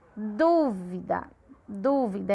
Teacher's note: A du é a sílaba tônica. Como ela é antepenúltima, ela é uma proparoxítona.